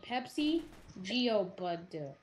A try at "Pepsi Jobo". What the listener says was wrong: Pepsi Jobo. It's Jobo! Pepsi Jobo. You're pronouncing the Joe wrong.